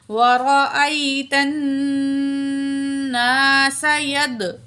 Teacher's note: دال جب ساکن ہوتا ہے تو کلکلا ہوتا ہے ادھر، ٹھیک ہے، ڈبل آواز آئے گی